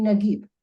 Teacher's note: a person from the North Africa would pronounce the jim like a G.